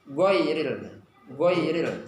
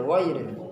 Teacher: huruf wain ini selain dia istiqla, dia juga rokhawah. Rokhawah atau jaryanus saut, mengalirnya suara. Maka dia mengalir.